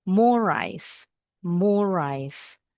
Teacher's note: Jadi huruf R yang pertama ini bacanya di R yang kedua aja.